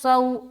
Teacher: صاد کو سیٹی کی آواز آئے گی لیکن حرف موٹا رہے گا، یعنی کہ اس حرف کو بولڈ پڑھنا ہے